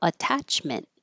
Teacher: In attachment, this T or these two T's are between um vowels, but they won't change because they're in the stressed syllable.